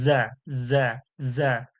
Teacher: যা, ঝির ঝির ও নরম আওয়াজে